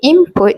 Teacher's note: both m and p share the bilabial place of articulation involving closure of the lips, making the transition easier and smoother in fast speech. · in the word input, the n sound often changes to m before the p sound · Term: regressive assimilation